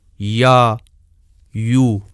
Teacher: زبان کا درمیانی حصہ اوپر کو اٹھتا ہے اور اس کا مخرج اس جگہ تنگ ہو جاتا ہے جہاں ہم چھوٹا سا سفید نقطہ دیکھ رہے ہیں، جیسے یا، یو۔